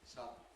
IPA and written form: ˈsʌdn̩ (sudden)